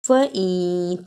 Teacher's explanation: نون ساکن کی آواز کو تھوڑی دیر ناک میں چھپانا ہے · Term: اخفا